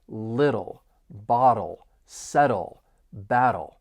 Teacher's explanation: For pronunciation, just keep in mind the word little, you're going to hear me pronounce those T's as a flap T. It's going to sound like a soft D, and this is a distinct part of the American accent. So I'm going to pronounce little with a flap T because the T's follow a vowel sound and then come before a dark L.